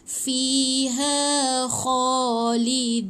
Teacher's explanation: Tapi dan ingat, kha ni dia kena o sikit. Dia bukan kha ke. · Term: bunyi kha